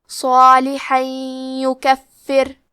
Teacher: پھر حرف الیا آتا ہے کلمت یکفر. یا حروف الادغام بغنہ میں سے ہے، تو ہم یہ حکم کو غنہ اور تشدید کے ساتھ ادا کریں گے